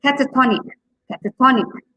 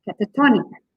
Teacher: the second last syllable is stress